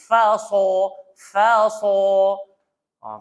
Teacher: sad hujung lidah langgar belakang gigi bawah dan sifat dia tebal